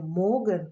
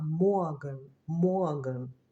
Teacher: ви знаєте що навіть не могн а моган моган тому що після О іде р і це р звучить як а така коротка А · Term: вокалізована Р